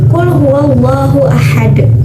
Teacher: Qalqalah Kubro dimana huruf qolqolah di sini tidak mati asli tapi dimatikan